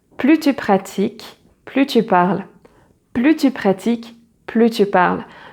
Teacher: you do not pronounce the final S. The final S is silent